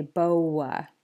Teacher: the w sound gets inserted in between the O and the A. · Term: intrusive w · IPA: /w/